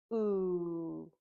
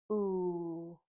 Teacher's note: ooh is a voice sound, and when we make it, our mouth is open, our lips are round, and our tongue is towards the back of our mouth